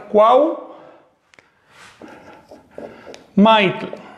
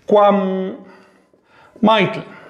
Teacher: La M se arrastra, contamina a la U, y la palabra correcta para decir la rama o la mano del árbol es cuam maitl.